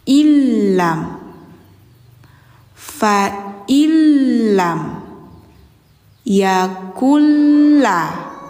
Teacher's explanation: Jadi nunnya langsung ke lam, dilebur. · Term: idgham